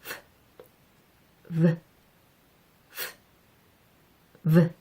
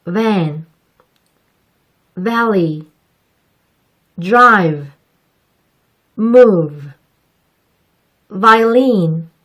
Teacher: F와 입모양이 같아요. 그런데 F가 바람만 내보내는 소리였다면 이번에는 바람의 소리를 실어서 내보내야 한답니다. F와 마찬가지로 V의 발음을 할 때는 너무 윗니가 아랫입술을 덮도록 발음하지 마세요. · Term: 유성음 V